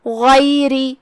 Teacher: غین کی ادائیگی حلق کے اوپر والے حصے سے ہے، غین حروف تفخیم میں سے ہے، ہم اسے بھاری آواز میں پڑھیں گے.